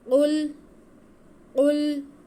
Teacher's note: قل قاف پہ پیش ہے، لام ساکن ہے، قاف کو ہم لام کے ساتھ ملائیں گے۔ قاف حروف مستعلیہ میں سے، اسے موٹا کر کے پڑھیں گے